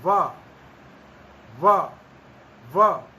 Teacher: इसके तो कहा कि दांत और ओष्ठ दोनों स्थान वकार के उच्चारण स्थान है। व नीचे वाला ओष्ठ ऊपर वाले दांतों के नीचे थोड़ा जाता है, स्पर्श, ऊपर वाले दांत उसके ऊपर आते आ टिकते हैं, फिर इस ध्वनि का उच्चारण किया जाता है व व व। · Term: दंतोष्ठम